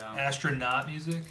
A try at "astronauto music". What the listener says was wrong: No, astronauto music. Put the O back.